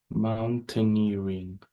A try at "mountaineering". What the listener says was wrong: Very good, exactly.